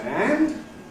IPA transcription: ænd